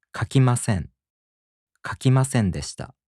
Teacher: In the present tense negative and the past tense negative, the accent falls on せ. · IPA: [kakimaseꜜn] [kakimaseꜜndeshita]